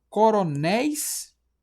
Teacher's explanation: Aqui a sílaba tônica última, coronéis. A gente fala corôneis.